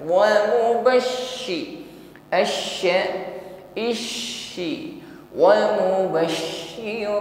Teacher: ketika shin bertasydid maka sifat tafasyi di sini lebih kuat. Intisyarur rih fil fami, menyebar angin di dalam mulut kita.